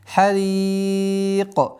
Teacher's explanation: Ра здесь мягкое, и удлинение в размере, здесь, ну, как мы сказали, 4 огласовок, кясру удлиняем, харик. И при остановке у нас появляется правило калькаля, так как звук каф относится к 5 звукам, у которых свойство взрывность.